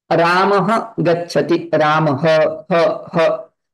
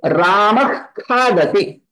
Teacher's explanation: The visarga is pronounced through kanthasthanam and the visarga which is followed by kakha will be pronounced through jihvamula.